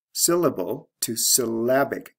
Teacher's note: Notice the stress shift from first syllable to second syllable. We have L-E to I-C ending plus the sound change.